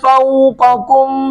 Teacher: فوق قوف کو پر کر کے پڑھیں گے، اگلا کاف کم یہ باریک پڑھیں گے